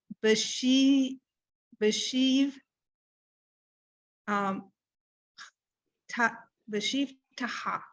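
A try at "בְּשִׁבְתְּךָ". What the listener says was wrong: Look at it and perfect. You did it right. Just own it.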